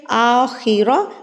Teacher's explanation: خا حروف مستعلیہ میں ہے کہ آپ نے اس کو پر یعنی کہ موٹا ہی پڑھنا ہے